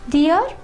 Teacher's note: Diyar sözündə i, a saitləri iştirak edir. I incə, a qalın saitdir. Deməli, bu sözdə saitlər bir-birini izləmir. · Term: ahəng qanunu